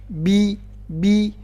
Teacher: Ingat ba, di mana tempat keluarnya ba? Di dua bibir. Bi, nggak boleh ada suara p, nggak boleh ada angin yang keluar.